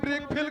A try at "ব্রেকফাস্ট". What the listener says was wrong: ব্রেক ফেল নয়, বলো ব্রেকফাস্ট। ব্রেকফাস্ট। আরে ব্রেকফাস্ট কি, বলো ব্রেকফাস্ট। ব্রেকফাস্ট।